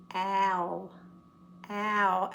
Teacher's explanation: It starts like a short A and then goes to a long O. Owl. Owl as in how.